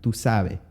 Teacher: the s will be often dropped and omitted